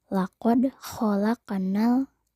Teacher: Kata qad dan khalaq itu merupakan contoh qalqalah sugro. Huruf dal dan qaf berharokat sukun, maka dibacanya memantul, kecil atau tipis.